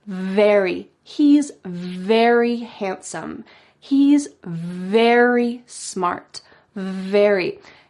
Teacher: if you want to say very, your top teeth are on your bottom lip.